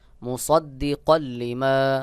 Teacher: লাম এখানে গুন্না ছাড়া মিলায় পড়তে হবে